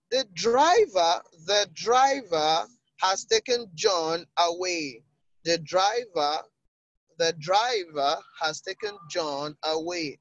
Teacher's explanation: The emphasis is on driver.